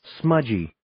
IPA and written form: 'smədʒiː (Smudgy)